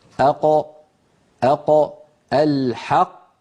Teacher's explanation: القاف تخرج من أقصى اللسان مع ما يحاذيها من الحنك اللحمي.